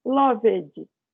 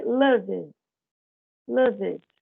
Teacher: Eu tenho que fazer um som mudo aí nesse D, né?